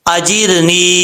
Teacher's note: اللہم اجرنی، یہاں پر را ساکن سے پہلے زیر ہے، را بریک پڑھا جائے گا. اجرنی، نون کے بعد یا ہے، یا مدہ، ایک الف کی مقدار اس کو لمبا کر کے پڑھیں گے